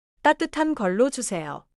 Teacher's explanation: 따뜻한 걸로 주세요. 따뜻한 has a double consonant sound at the start. So begin with a little tension.